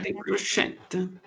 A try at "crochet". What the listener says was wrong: Crochet, hein? Je ne prononce pas le T final.